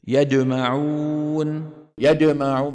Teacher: خاوه ما بتصحوا صوتها بالدال بده يجيبها بده يجيبها شديده لكن عم يستعمل طرف اللسان مع وسط اللسان فبيطلع الصوت ايه مخلوط بين الجيم والدال